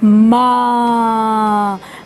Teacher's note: मेरे मुंह से भी हवा निकली और नाक से भी हवा निकली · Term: चंद्र बिंदु